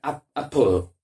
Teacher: Y a mí me dio por mirar la fonética de esta palabra y realmente la A es una especie de A y E y luego entre la P y la L no hay una vocal en la pronunciación fonética